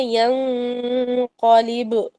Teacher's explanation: ینقلب میں قاف کیونکہ موٹا ہے تو لہٰذا یہ موٹا غنہ ہو رہا ہے